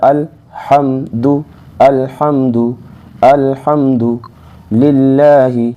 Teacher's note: لام ساکن ہے، اور ساکن حرف کو آپ کو معلوم ہے ساکن حرف اپنے سے پچھلے والے حرف سے ملا کر پڑھا جاتا ہے۔ لام ساکن ہے لہذا اس کو ہم نے حمزہ سے ملا کر پڑھا